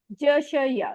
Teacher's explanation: फिर है जबान के बीच से हैं ज श और या, ज श या जबान के बीच से हैं। इसमें आप अगर बोलेंगे तो आपको पता चलेगा जबान बीच से ऊपर को उठती है।